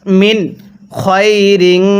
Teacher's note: এখানে নুন সাকিনটা আমরা স্পষ্ট করে পড়বো